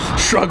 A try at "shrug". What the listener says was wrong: Shrug. Shrug. Shrug. No G, it's a shrug. Shrug.